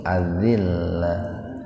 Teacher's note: kalau mau berhenti di situ ada tak marbutoh itu, maka taknya dibaca sukun